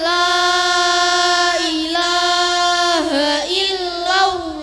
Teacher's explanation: Shin berharokat sukun dibaca dari tengah lidah beserta angin yang tersebar keras. La dibaca panjang sampai 4 atau 5 harokat.